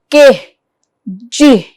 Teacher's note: back of the tongue is pressed against an intermediate area the hard and the soft area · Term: velar